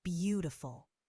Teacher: The first syllable is stressed.